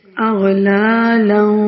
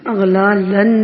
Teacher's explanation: لا اخفا ہو رہا ہے، ناک میں آواز کو چھپایا جا رہا ہے